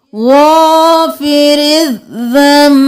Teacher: नून की जगह मीम को पढ़ेंगे